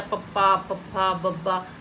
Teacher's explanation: ਬੁੱਲ ਆ ਜਿਹੜੇ ਜੁੜ ਜਾਂਦੇ ਆ, ਪੱਪਾ, ਪੱਫਾ, ਬੱਬਾ, ਤਾਂ ਕਰਕੇ ਇਹਨੂੰ ਹੋਠੀ ਕਹਿੰਦੇ ਆ,